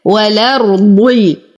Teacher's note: والأرض أيضا أصل الكلمة الأرض، لكن الإمام ورش يقوم بحذف الهمزة ونقل حركتها للساكن الصحيح قبلها وهي لام التعريف فتصبح والأرض. نفخم الراء والضاد بأقل درجات التفخيم لأنها مكسورة